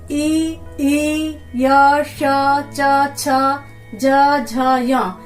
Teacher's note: तो इसलिए ई य श च छ ज झ य, इनका स्थान तालव्य हो जाता है। तालू से बोले जाते हैं तो इनका नाम तालव्य हो जाता है।